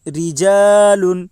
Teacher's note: را کے نیچے زیر ہے اس لیے را باریک ہوگی، الف سے پہلے زبر ہے اس لیے الف مدہ ہوگا، الف مدہ کو ایک الف کے برابر کھینچ کر پڑھیں۔ لام کے اوپر 2 پیش کی تنوین ہے، تنوین اور نون ساکن کی آواز یکساں ہوتی ہے۔